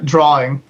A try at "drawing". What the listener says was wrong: Drawing. There's no extra R in there. no different.